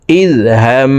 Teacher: হরকতের বামে নুনে মিমে তাসদিদ হইলে সর্বাবস্থায় নাকের বাসি থেকে গুন্না করিয়া পড়িতে হয়। তো এই জবরওয়ালা হাটি তাসদিদওয়ালা মিমের সাথে 3 সেকেন্ড পরিমাণ গুন্না করে পড়ব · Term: ওয়াজিব গুন্না